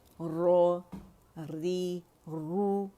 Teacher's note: اس میں تفخیم پیدا ہو جاتی ہے کیونکہ ہم زبان کی جڑ اٹھا لیتے ہیں · اچھا رو رو کی موٹائی ایک جیسی ہونی چاہیے، یعنی باریک نہیں ہونا چاہیے